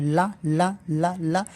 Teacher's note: जब ला बोलते हैं तो जबान आगे दांत में लड़ती है